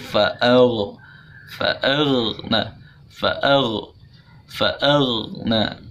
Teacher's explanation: Huruf ghain jadi sukun maka isti'ala ya harus naik. Jadi pangkal lidah kita naik ke langit-langit jadi tebal. Fa'aw. Jadi dibacanya datar tidak boleh.